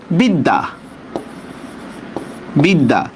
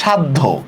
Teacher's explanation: শব্দের মধ্যে বা শেষে জফলার উচ্চারণ দ্বিত্ব হয়।